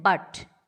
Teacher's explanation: A as in but, unrounded, central, half open